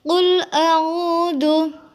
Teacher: Qul a'udzu merupakan bacaan mad tabi'i di mana ada huruf wawu jatuh setelah harokat dhammah, maka harus dibaca panjang 2 harokat